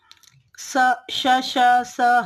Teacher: स श श स ह यह चार वर्ण उष्म कहलाते हैं इनका उच्चारण करते समय श्वास वायु घर्षण करते हुए बाहर निकलती है जिससे ऊष्मा उत्पन्न होती है अतः यह वर्ण उष्म कहलाते हैं